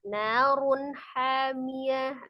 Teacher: ini ada tanwin bertemu dengan ha. Itu salah satu huruf al-halqi, maka dibaca dengan izhar jelas. Tidak boleh dipantulkan, tapi sempurna.